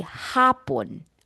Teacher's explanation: So for the first syllable, ha, you stretch the A. Hapon. Okay, vowel lengthening.